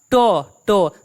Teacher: दांत के हल्का सा ऊपर जाके जीभ उल्टा होकर सट रहा है इसे कहते हैं मूर्धन्य ध्वनियां ठीक है जो तो होता है